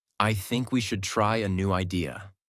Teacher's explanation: Voice goes down at the end. This is called falling intonation